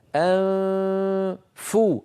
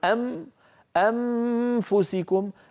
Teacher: وهناك فجوه بين الاسنان والشفه السفلى يمر منها صويت فموي ان فو فلما اصل الى الفاء فو اضغط على مخرج الفاء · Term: اخفاء النون